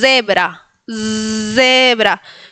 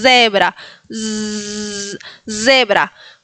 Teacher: En este caso se pronuncia como una Z vibrante.